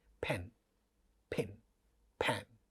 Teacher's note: तो ये natural process है पा का इनिशियल पोजीशन पर एस्पिरेटेड होना।